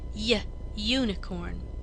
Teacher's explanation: unicorn starts with a consonant sound y y like the beginning of yes and yellow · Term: consonant Y sound